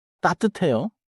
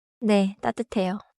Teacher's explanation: 따뜻해요? rises because it asks. 네, 따뜻해요 falls because it answers.